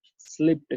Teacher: ट की साउंड के साथ एंड हो रहा है स्लिप्ड